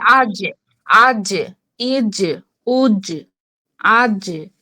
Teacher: এই যে দেখুন একটা তরঙ্গ উঠছে, তরঙ্গের এখানে কিন্তু যখন আমরা জিম জিম বলছি, জিহ্বাটা কিন্তু উপরে তালুর সাথে লেগে যাচ্ছে